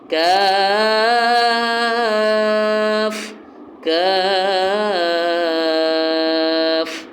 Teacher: اس کے بعد جو ہے وہ کاف ہے، جیسے قوف کی ادائیگی ہے اسی طرح ہی کاف کی، لیکن قوف کو موٹا پڑھیں گے، کاف کو باریک پڑھیں گے، کاف مد ہے اور آخر میں فا کی آواز واضح ہونی چاہیے، بس جیسے قوف ہے قاف کو موٹا پڑھنا ہے اور اسی طرح کاف کو پڑھنا ہے لیکن کاف کو باریک پڑھیں گے۔